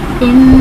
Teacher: ان نون مشدد ہے، اس میں غنہ کریں گے۔